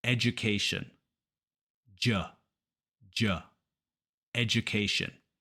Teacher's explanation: Spanish native speakers almost always pronounce this education but it's education the D is actually pronounced like a j so I like to call this the hidden J sound